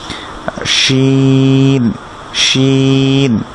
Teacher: এটা জিহ্বার মাঝখান থেকে উপরের তালুর দিক থেকে উচ্চারণ হবে, এটা লাগতে হবে না, এটা লাগানোটা জরুরি না, কিন্তু একটু ফাঁকা থাকবে এবং মুখ ভর্তি করে বাতাস আসবে। যেমন শিন, আমরা যে মুখ ভর্তি করে শো শো সাউন্ড করি এরকম শিন, শিন।